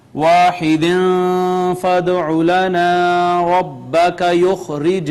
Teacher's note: یہاں پہ ناظرین واحد ہم نے اخفا کیا، دال پہ قلقلہ کیا، الف مدہ ہے، اس کے بعد جیم پہ قلقلہ کیا